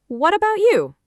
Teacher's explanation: Notice about starts with a quick schwah too. About, not about.